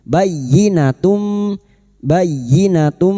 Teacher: masuk pada huruf ya tanpa ditahan lama-lama hanya masuk tanpa mendengung